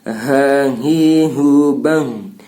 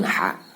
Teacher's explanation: Di dada dia tempat pengeluaran huruf, makhrajul hurufnya di dada. Beda dengan ha. Ha itu tenggorokan